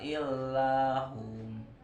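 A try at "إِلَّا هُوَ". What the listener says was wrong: Hu dua harakat ya. Isbak namanya.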